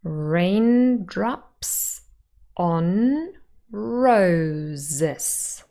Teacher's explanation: raindrops is a word with 2 syllables, and the first syllable is stressed.